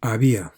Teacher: these last two letters these vowel letters do not form a diphthong